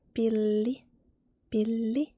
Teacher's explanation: when there is 2 consonants, the same consonant, you double pronounce the consonant